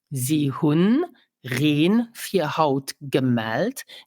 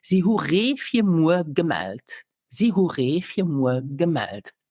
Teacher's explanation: So sometimes we drop our final N of a word and sometimes not. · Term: N rule